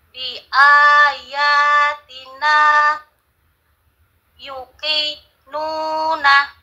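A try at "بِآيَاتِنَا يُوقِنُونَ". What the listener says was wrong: Ayo, U-nya panjang nggak?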